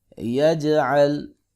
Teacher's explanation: جیم ساکن ہو تو قلقلہ کرتے ہیں کیونکہ یہ حروف قلقلہ میں سے ہے۔